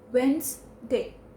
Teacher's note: It will become as the Wednes. The Wednes in Wednesday will become as Wens. Wednesday. So Wednes will become as Wens.